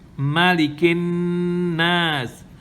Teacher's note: Again, mushaddada, and the noon is mushaddada, so you got to hold it for 2 counts.